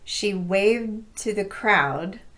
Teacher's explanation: the D doesn't get released so you mainly hear the T